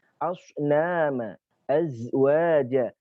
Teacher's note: Ada sifat syafir atau suara tambahan seperti suara unggas, yaitu ada 3 huruf yang memiliki sifat ini, shad, za, sin.